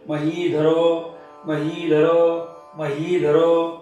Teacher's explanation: महीधरो ही दीर्घ करा, हिचा उच्चार छान दीर्घ करा, म्हणजे आपापुरतं धचा उच्चार ह्रस्व येतो आणि पुढं रो दीर्घ.